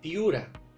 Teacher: Al otro caso de los diptongos, donde tenemos las 2 vocales cerradas